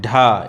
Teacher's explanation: ढ यह मूर्धन्य व्यंजन है मूर्धन्य व्यंजन है